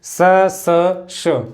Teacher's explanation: और जब हम ऊष्म व्यंजनों का, पहले तीन ऊष्म व्यंजनों का उच्चारण करते हैं स स श, तो हमारा इनमें कंपन महसूस नहीं होता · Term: अघोष